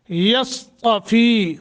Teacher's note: یصطفی صاد اور تا کو موٹا کرنا ہے، یا اور صاد میں فرق کرنا ہے۔